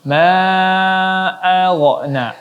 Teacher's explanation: ghain juga tidak boleh memantul karena huruf ghain bukan huruf qalqalah, maka tidak boleh dipantulkan.